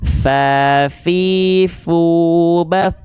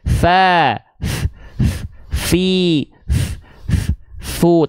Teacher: Ujung gigi sari atas kita bertemu dengan bibir bawah, tapi bukan bibir bawah yang luar yang kering, tapi bibir bawah bagian dalam yang basahnya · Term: huruf fa